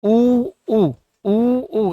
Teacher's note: देखो उ का उच्चारण करते हैं। तो इसमें हमारे ओष्ठ क्या होते हैं साहब? गोल होते हैं। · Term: वृत्ताकार, वर्ताकार